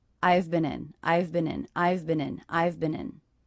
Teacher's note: The contraction I've the word been, and in. They're all quite quick and linked together.